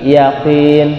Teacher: Huruf qa ketika dia kasrah ketebalannya berkurang, maka ketika dibaca yakin, jangan yakin, qain, atau terlalu tipis yakin, atau kaf jadinya, tapi yakin.